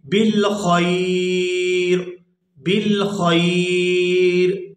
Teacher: وقف کی صورت میں را جو ہے یہ بھی ساکن ہو جائے گی اور یہ یا اور را اس خا کی زبر کے ساتھ ادا ہوگی، اور اس کو وقف کی صورت میں پڑھیں گے بالخیر، بالخیر۔